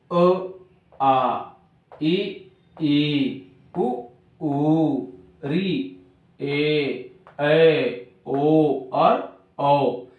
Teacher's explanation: जो अ है, ई, उ और री, इन स्वरों को कम समय लग रहा है और शेष स्वरों को अधिक समय लग रहा है।